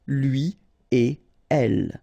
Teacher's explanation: So no links after et.